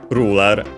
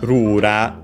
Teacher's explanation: the L sound isn't in Japanese, so it becomes also R